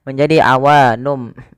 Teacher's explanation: nun diganti dengan mim karena dia bacaan iqlab yaitu nunnya bertemu dengan huruf ba. Awalnya awa nun menjadi awanum.